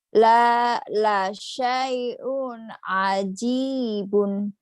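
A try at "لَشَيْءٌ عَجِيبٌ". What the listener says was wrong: bagus.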